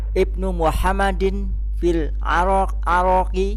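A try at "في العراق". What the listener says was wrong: Irak. Tidak ada Arak. Irak ada. Nah, Irak. Nah, Irak ini. Nah, Irak.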